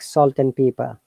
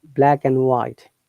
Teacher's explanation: if it is in between two words, then and should be sound like n